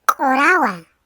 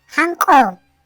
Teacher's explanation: La vocal U, antes o después de un sonido postvelar, se pronuncia O